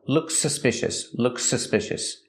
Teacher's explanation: We only hear one S sound. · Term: link the words